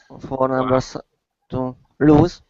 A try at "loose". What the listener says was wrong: Loose. S pronunciation. Okay, be careful. LOSE is lose. as in you lost something. I lose my keys all the time. With another O, it's loose, and that's an adjective meaning the opposite of tight.